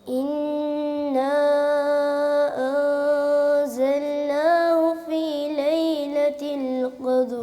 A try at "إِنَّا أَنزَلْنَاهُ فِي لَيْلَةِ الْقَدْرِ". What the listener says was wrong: زل جب پیر زل، زل نہیں ہے، زل، سیدھا زبر کی آواز جو ہے نا وہ سیدھا منہ کھول کے سیدھی نکالیں، اور تھوڑا سا کھل کے پڑھیں۔ آپ بالکل ایسے جیسے نا آواز کو دبا رہے ہیں۔